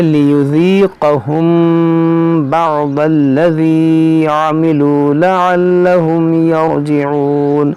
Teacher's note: मीम साकिन के बाद बा है, तो यहाँ पर भी इख़फ़ाए शफ़वी होगा, यहाँ पर गुन्ना होगा